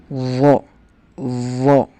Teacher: Penempatan lidahnya seperti huruf zal, namun lebih tebal. Posisi lidah dilengkungkan ke atas. Zo, zo. Punya sifat itbaq, jadi harus ditebalkan.